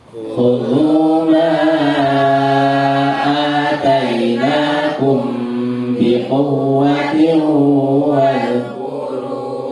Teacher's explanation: Ada kum ketemu ba itu dengung. Kemudian quwwa itu cukup 2 ketukan.